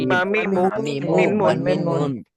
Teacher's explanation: দুই ঠোঁটের শুকনো জায়গা হইতে মিম